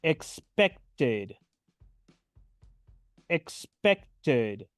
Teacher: pronuncio la Ed final como una ID